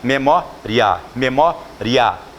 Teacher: que a palavra memória é acentuada por tratar-se de uma paroxítona terminada com ditongo oral crescente tá ditongo oral crescente ditongo porque eu tenho semivogal e vogal oral porque você consegue pronunciar com o nariz fechado com memória memoria